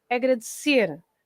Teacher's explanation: So when the word ends with an R, like agradecer, we stress the end. So it's agradecer at the end.